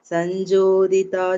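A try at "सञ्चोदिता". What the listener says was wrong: அந்த சைன் சோதிதா, ஜோதிதான்னு கேட்கறது 3வது லைன்ல. பவதா சைஞ்சோதிதா ச ஸ்வயம், அது கொஞ்சம் கரெக்ட் பண்ணிக்கோங்க.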